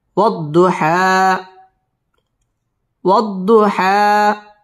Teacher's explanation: واو ضاد زبر وض ضاد পেশ দু وض حا খারা জবর হা والضحى ওয়াও ঠোঁট গোল করে উচ্চারণ করব ওয়াদ দত তাসদীদ ওয়ালা হরফ والضحى এক আলিফ টান দিয়ে ওয়াকফ করব